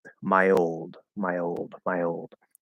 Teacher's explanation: when you say my old okay there is a little bit of a y there's a small Y connector